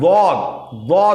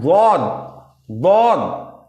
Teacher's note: यह किसी के साथ मिला हुआ नहीं है जबान की करवट जबान की करवट और ऊपर के दाढ़ की जड़ य मोलर जो हमारे हैं राइट हो लेफ्ट हो जो मोलर